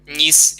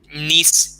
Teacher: На Верховині б повіли ніс із м'яким «н», а на Гуцульщині ніс із твердим «н».